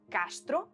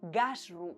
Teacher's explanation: Par exemple, le mot CASTRUM en latin dio castro, en espagnol, cette occlusive sourde initiale est conservée, mais en afro-roman dio gasru, c'est-à-dire que le K est sonore en ga